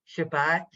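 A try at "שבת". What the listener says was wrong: no it's tricking you don't do it so fast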